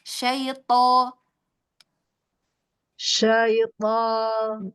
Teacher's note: Iya, tapi hati-hati tertutup ya. Jadi to tidak tertutup ya, buka.